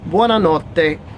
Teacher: two t's again double consonant sound you emphasize that a little bit more